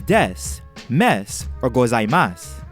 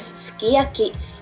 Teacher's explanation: he actually pronounced a vowel ooh but the vocal cords don't vibrate enough and you can't hear the sound